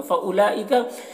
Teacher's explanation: फउलाइका यहाँ पर वाव में कोई हरकत नहीं है, वाव को नहीं पढ़ना है। लाम में जो मद है मद्द मुत्तसिल है, इसे 3-4 अलिफ के बराबर खींचेंगे।